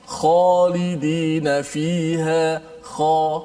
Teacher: Kerana pangkal lidah kita itu dia terangkat, menyebabkan suara kita menghala ke atas. Khalidi, bukan kha.